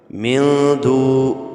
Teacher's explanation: نون ساکن کے بعد حروف اخفاء میں سے دال آ رہا ہے، لہذا غنہ کر کے پڑھیں گے